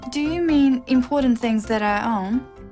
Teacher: It's a yes-no question with a rising tone.